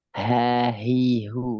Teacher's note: Makrot H di mana? di pangkal tenggorokan.